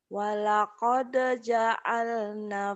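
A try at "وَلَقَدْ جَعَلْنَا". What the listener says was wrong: ja'alna panjang.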